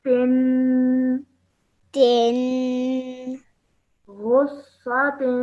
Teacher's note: But also remember that this has a kasraten underneath it, and kasraten needs to produce a nasal sound at the end that needs to be elongated for a bit